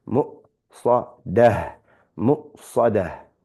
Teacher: We have a hamza with sukoon, so that we recite as a stop.